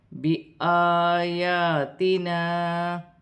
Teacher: مد منفصل، چار الف کی مقدار کھینچ کے پڑھا جائے گا